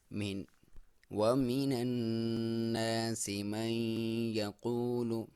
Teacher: ایک الف کے برابر آپ غنہ کریں گے، ناک میں سے آواز نکالیں گے